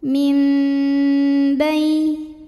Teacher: Karena ada nun sukun yang menghadapi huruf ba, maka bunyi nun diganti bunyi mim, mim dan tahan dengungkan. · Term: iqlab